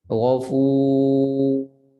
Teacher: Dan ra tebal, ada takrir satu kali getaran dan suara itu mengalir sedikit, tidak mengejut berhenti.